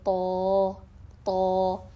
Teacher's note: اقصی لسان، طرف اللسان ایک ساتھ بلند ہوئی · تالو اور زبان کے درمیان آ کر یہ بہت موٹی سنائی دیتی ہے آواز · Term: صفت الاطباق